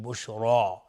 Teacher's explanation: بشرا را اینجا حکمش استعلاست چون فتحه داره و الف هم تابع را حکم استعلا به خودش میگیم بشرا، نمیگیم بشره، بشرا.